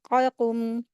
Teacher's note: फ़ौ, फ़ौ, क़ाफ़, हुरूफ़ हलक़, इसको जो है हलक से अदा करेंगे। ज़ुबान की जड़ को ऊपर के तालु में जब टच करेंगे तो ये वाला 2 नुक्तों वाला क़ाफ़ अदा होता है, क़ाक़ुम। और छोटा काफ़ है, छोटा काफ़, तो आराम से पढ़ सकता है इंसान।